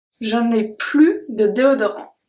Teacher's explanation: When it's a negative thing, you don't pronounce the S.